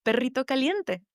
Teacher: I pronounced it as that trilled, rolled R sound